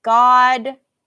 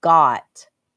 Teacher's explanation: They have the same vowel sound here. This is going to sound the same, only one has a D and one has a T at the end.